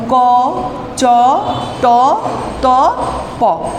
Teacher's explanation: যেই ধ্বনিগুলো উচ্চারণের সময় স্বরতন্ত্রী অনুরণিত হয় না, সেইগুলো হচ্ছে অঘোষ ধ্বনি।